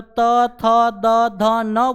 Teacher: जो हमारी जीभ होती है वह दांत को स्पर्श करती है, यानी दांत को छूती है